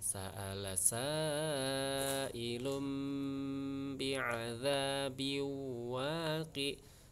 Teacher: Sa'ilum di situ ada tanwin ketemu dengan ba, namanya iklab ya, harus disuarakan dengan mengucapkan huruf mim.